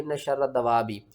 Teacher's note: را کو بھی 2 بار پڑھنا ہے، دال کو بھی 2 بار پڑھنا ہے، واؤ کو کھینچنا ہے 5 الف کے برابر، اور کھینچ کر ہم نے با کے ساتھ ملانا ہے۔